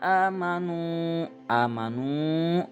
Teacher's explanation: berharokat dhomah panjang dua harakat